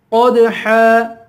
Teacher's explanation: قاف پہ قلقلہ کریں گے، قاف کو پر پڑھیں گے، یہاں پہ بھی دو زبر پر وقف ہو رہا ہے.